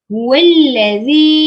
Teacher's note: Zi dibaca dengan 4 atau 5 harakat. Namanya mad jaiz munfasil.